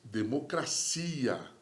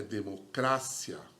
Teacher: a sílaba tônica é a cia. Em espanhol, é democrácia. Tá vendo? A sílaba tônica é o cra